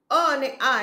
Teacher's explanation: અ અને આ એ જીભના મધ્ય ભાગથી બોલાય છે.